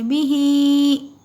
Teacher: ही को जो है थोड़ा ज़्यादा खींचेंगे, बी को जल्द पढ़ेंगे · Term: मद